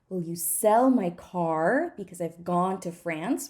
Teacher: I've reduced everything that is not Cell Car gone and France